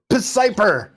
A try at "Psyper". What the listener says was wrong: Did you pronounce the P in Psyper? Like P psychiatrist? P pneumonia?